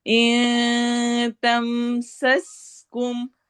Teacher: सीन में सिटी वाली आवाज होगी